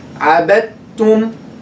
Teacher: The dal is dropped completely. We make complete idgham.